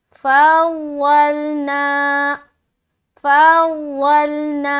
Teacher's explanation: ना में हमने खींचा, अलिफ मद्दा किया।